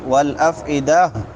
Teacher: وقف کریں گے تو تا ہا میں بدل جائے گی